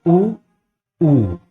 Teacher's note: इसका उच्चारण हम ओठ से करते हैं क्योंकि इसके उच्चारण में हमारा ओठ गोलाकार रूप धारण करता है